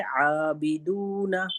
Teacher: پھر عابدون جو ہے عین سے ہے، وہ حلق کے درمیانی حصے سے ادا ہوتا ہے